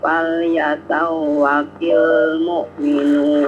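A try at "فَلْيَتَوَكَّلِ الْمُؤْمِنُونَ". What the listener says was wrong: Falyatawakkalil mu'minun. Bukan tawakil ya, tawakkalil.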